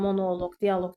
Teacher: Amma cansız varlıqlara qoşulanda, məsələn monoloq, dialoq tipli sözlər cansız varlıqdır. Cansız varlıq olduğu üçün log hissəciyi burda vurğu qəbul eləmiş olur.